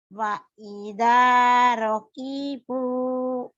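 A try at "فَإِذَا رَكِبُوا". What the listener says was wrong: Bukan wa ya, fa. Faida.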